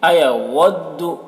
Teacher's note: واو کو جب بولتے ہیں تو دونوں ہونٹ گول ہوتے ہیں